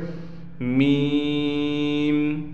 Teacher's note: का मखर यह है कि नीचे के जो खुश्क हिस्सा है नीचे का होठों का खुश्क हिस्सा ऊपर के होठों के खुश्क हिस्से से मिले यानी दोनों होठों के दोनों खुश्की वाले हिस्से नीचे का जो